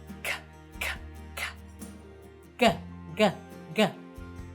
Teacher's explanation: made way in the back of the mouth using the back of the tongue and the soft palate, which is also called the velum.